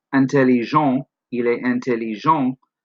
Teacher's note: the T is silent. It's part of the on, the nasal vowel at the end.